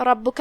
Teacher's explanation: را کو بھاری آواز میں پڑھنا ہے، کیونکہ یہاں حکم ہوا تفخیم۔